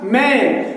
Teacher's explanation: मैंने होंठ को मिलाया तो ये साउंड जो निकली है ये है बाइलेबियल साउंड, और इस साउंड को कहते हैं कंसोनेंट साउंड, क्योंकि इसमें हमने मिलाए हैं आर्टिकुलेटर्स।